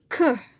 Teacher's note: we got the example of the two the first is k we pronounce it with a lot of air puffs that is called aspirated sound